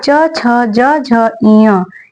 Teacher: क वर्ग को हम कंठ ध्वनि से बोलते हैं। फिर च वर्ग च, छ, ज, झ, ञ इसको हम तालु की सहायता से बोलते हैं